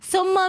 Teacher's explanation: ثم میں میم مشدد ہونے کی وجہ سے ہم غنہ کریں گے